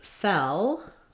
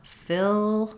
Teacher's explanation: So fell is a little bit more open. My tongue's a little bit more flat. Fill, my tongue is a little higher.